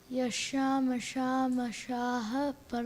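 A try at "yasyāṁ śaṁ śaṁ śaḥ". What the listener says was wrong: No, you missed the sham. Try it again.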